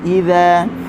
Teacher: Hatta idza, kalimah idza huruf zal hujung lidah di hujung gigi atas. Idza bagi atas kita buka sambil nak senyum.